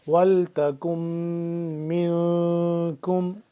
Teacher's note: نون ساکن پہ اخفا ہوگا، آواز کو ناک کے اندر لے جا کر پڑھیں گے